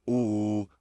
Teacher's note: दोनों होठों को आगे की तरफ लाते हैं, गोल कर लेते हैं, फुल राउंड सर्कल। बिल्कुल भी आपका ओवल शेप का लिप्स नहीं होने चाहिए, फुल राउंड।